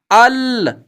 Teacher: لام کے پڑھنے میں زبان کا کنارہ، ثنایا، رباعی، انیاب اور زواہق کے مسوڑوں سے لگا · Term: لام کا مخرج